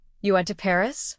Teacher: A rising tone makes it a question, but a falling tone can show surprise.